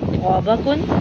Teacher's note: तो ज़ुबान की नोक को सामने वाले ऊपरी दांतों की जड़ से लगाने से तो अदा होता है। और बच्चों, तो मोटा और ऊंचा पढ़ा जाएगा, लेकिन तो को अदा करते हुए मुंह को गोल आपने नहीं करना, यानी होठों को गोल नहीं करना।